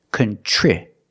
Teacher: TR makes the ch sound like chicken, plus the R together, contri. The I after TR is a short I, so we make the sound I like this is.